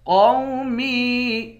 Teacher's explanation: میم کو بھی یا کے ساتھ ملا کر 1 الف کے مقدار کھینچیں گے